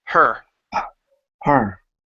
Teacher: reduce the H just a little bit so it's not as much hot but like a breath